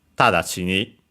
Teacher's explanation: So Tadashi ni, high, and everything else low. High the first syllable, better in this case mora, and then everything, all the other ones lower. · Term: accent on the first syllable